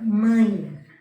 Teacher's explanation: O E ele tem som de I e está apoiado em uma vogal, que é o A, na mesma sílaba. Você fala mãe. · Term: semivogal